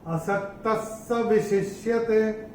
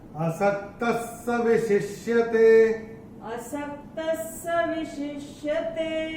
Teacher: अभी चौथे चरण में ये जो विसर्ग आ रहा है वो विसर्ग के बाद का अक्षर है स, और विसर्ग के बाद अगर स आएगा तो विसर्ग का उच्चारण होगा आधा स